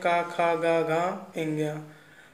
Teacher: तो ये सब कहाँ से बोले जाएंगे, कंठ से। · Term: का वर्ग